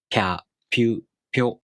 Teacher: you make the tongue position of the i vowel, while you make the p consonant. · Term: Yōon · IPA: [pʲ]